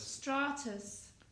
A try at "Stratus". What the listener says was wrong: Open your mouth wider when you speak. Open the mouth. You're mumbling. You're mumbling.